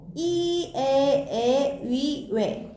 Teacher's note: 발음할 때 혀의 최고점의 위치가 앞쪽에 있는 모음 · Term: 전설모음